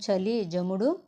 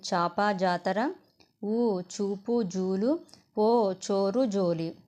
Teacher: అ ఆ ఉ ఊ ఓ ఓ ఔ లతో కూడిన చాజాలు దంత్యములు